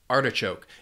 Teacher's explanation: has 3 syllables, and the stress is on that first syllable